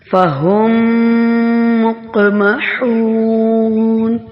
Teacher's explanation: میم مشدد جو ہے اس پہ غنہ ہوتا ہے اور یہاں پہ ادغام شفوی بھی ہو رہا ہے ، میم کو میم میں مدغم کیا جا رہا ہے، فہم